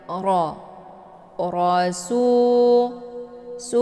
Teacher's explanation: cara bacanya posisi pangkal lidah naik ke langit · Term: tahim